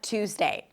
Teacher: And then I started noticing that actually people don't put the Y sound in the United States. They don't say Tuesday, but Tuesday. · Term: without the Y sound